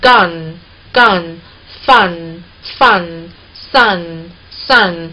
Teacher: 就是你的舌尖抬起，顶到上齿龈那里顶死，有一部分气流从鼻腔出来，所以它是一个鼻辅音